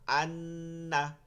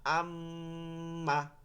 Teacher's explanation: একটু নাকের মধ্যে চাপ দিয়ে বলতে হয় গুন · নাকের মধ্যে নিয়ে উচ্চারণ করতে হয়, গুন্না উচ্চারিত হয়।